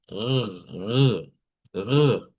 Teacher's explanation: Es lo que vibra la úvula. Así se escucha la R.